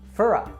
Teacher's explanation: Reduce for to fur and connect with a